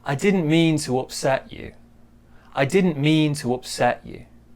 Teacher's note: small stress on didn't and then big stress on mean.